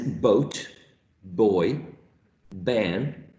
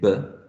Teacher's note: you have to put your lips together to say but and you're stopping the airflow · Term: bilabial stop